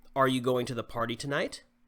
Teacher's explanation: your voice will rise on the word tonight